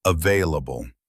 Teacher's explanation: Some people do say the L a bit stronger, but the standard way is available. The L is soft. Try to keep it light and smooth.